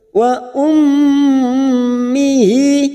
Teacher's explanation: Wa mim yang bertasdid gunna musaddadah, kita tekan 3 ketuk.